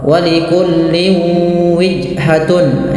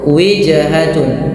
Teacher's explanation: ketika kita membacakan huruf jim ini usahakan dipantulkan bunyinya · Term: qalqalah